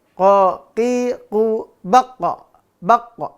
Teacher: dia tidak boleh mengalir udara ataupun mengalir suara · Kan Berhenti tuh baqo ya maka dia apa syid syiddah karena apa suaranya tertahan